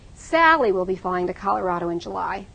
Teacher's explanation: I still have the basic stress underneath, but I'm pulling up Sally because I want to contrast Sally with something.